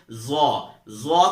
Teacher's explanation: ظا کو ادا کرتے ہوئے بھی ہم اپنی زبان کی نوک کو تھوڑا سا باہر کی طرف نکالیں گے